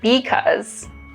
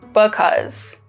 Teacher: Another remarkable feature of Chicano English is that there's less vowel reduction.